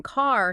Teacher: the consonant R actually reaches backward and distorts the vowel sound completely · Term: R-controlled vowels